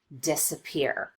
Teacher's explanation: And the change in pitch on the vowel is not quite as noticeable. An example of secondary stress would be the first syllable in this word, disappear. We do spend some time on this syllable, and we do make the vowel louder and longer, but not quite as much as we do on this last syllable, the third syllable, peer.